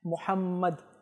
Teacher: তো দুই ঠোঁট একের অপরের সাথে মিলে যায়